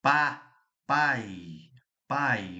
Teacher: O A é forte, o A é pá, pai. Pai, mas olha como o I já vai sumindo. Pai, ele faz um papel aqui de semi semivogal e o a vogal.